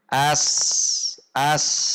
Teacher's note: Ujung lidah berada di belakang gigi seri bawah dan posisi tengah lidah tidak naik ke atas, yaitu lurus. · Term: huruf sin